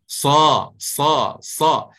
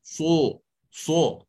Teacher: keadaan lidah akan mendempek ke atas. Sa. Tapi pastikan bibir mulut kita ini jangan dibulat, jangan so. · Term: tafkhim haqiqi